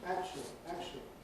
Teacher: They don’t even have the [t] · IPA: [ˈækʃli]